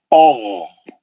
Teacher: غین کا آواز بھاری ہوگا، بس کھردرا نہیں ہوگا